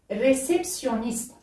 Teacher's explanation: Réceptionniste avec un R roulé.